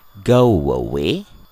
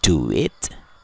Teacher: u dan kata setelahnya diawali oleh salah satu huruf vowel maka kedua kata tersebut bisa kita gabungkan bunyinya dengan cara menghadirkan huruf we di antara kedua kata tersebut